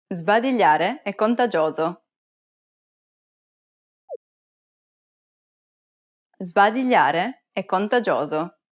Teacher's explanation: when the letter S is followed by a voiced consonant, the S takes on a Z sound.